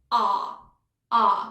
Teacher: we have the ah, which is the back ah sound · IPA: ɑː